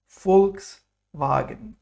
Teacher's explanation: So there's a special sound here. V is f like fur